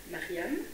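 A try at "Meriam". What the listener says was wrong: Non, avec un E. Mariam.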